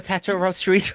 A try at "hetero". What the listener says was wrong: You said that like you pronounced the E in vegetable.